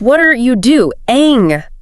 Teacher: Every syllable gets this equal heavy weight.